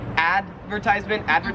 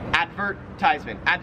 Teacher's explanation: So in American English we would say advertisement, and in Australian English you say advertisement. It's like there's more emphasis on the vert part.